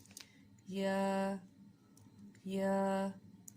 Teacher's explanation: حمزہ حمزہ حمزہ کا مخرج ہے اقصی حلق سے سینے کی طرف والا۔ یا یا کا مخرج ہے وسط زبان اور بالمقابل تالو